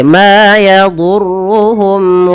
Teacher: mim mati bertemu wau jelaskan karena ia izhar syafawi